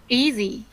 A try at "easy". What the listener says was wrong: Easy. Kiểm soát dấu sắc của em ở các âm trọng âm nhé. Thường là em sẽ hay cho dấu sắc vào. Cái dấu sắc đấy thì có thể dùng được, nhưng sau này nó sẽ liên quan đến ngữ điệu ở trong câu.